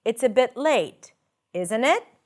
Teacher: When you use rising intonation in the second part, the tag, it usually suggests that you are uncertain, that you're seeking for a response, that you're really asking a question.